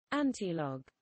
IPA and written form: ˈæntɪˌlɒɡ (antilog)